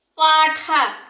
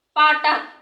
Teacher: দেখুন এই যে পাঠা থেকে পাটা, মানে এই যে ট, এটা হচ্ছে ঠটা হচ্ছে মহাপ্রাণ আর টটা হচ্ছে অল্পপ্রাণ